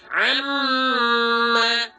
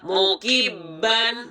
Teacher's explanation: nun dengan tashdid dan mim dengan tashdid, dibaca bukan hanya dengan menekan, tetapi juga ditahan. Dilaksanakan selama dua harakat sampai tiga harakat. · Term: ghunnah